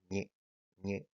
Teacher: la consonante palatal del español estándar es el sonido ñe